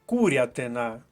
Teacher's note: наголос на першому складі